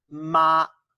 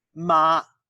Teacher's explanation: Try singing it like this, ma, with a high level tone.